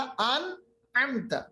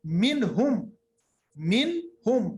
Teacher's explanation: अनअमता, अन नून की आवाज हमने इजहार की, जाहिर की, इसके बाद आगे बढ़े, कोई गुन्ना नहीं, नाक के अंदर किसी आवाज को हमने नहीं रखा, ना हमने आवाज को छुपाया